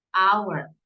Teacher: Aunque empieza con H, el primer sonido que escuchamos es hour, no suena la H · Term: un sonido vocal